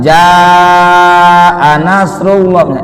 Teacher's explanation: Idza ja bukan lagi mad asli tapi mad wajib muttasil 6 ketukan